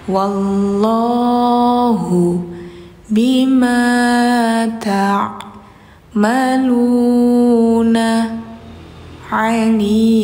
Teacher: ain ya, ain. Jadi bacanya itu di bainiyah, sifatnya bainiyah. Jadi ada mengalir dikit. Jadi nggak tak, tapi ta gitu.